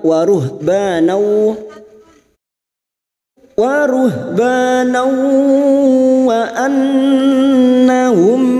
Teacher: Waruh ba fathah diikuti alif. Banau fathah tanwin yang bertemu waw idgham bi gunnah siap masuk pada huruf berikutnya yaitu huruf waw dan mendengung selama 3 atau 2 harokat. Nau wa annahum nun yang bertasdid gunnah musyaddadah kita dengungkan selama 3 harokat.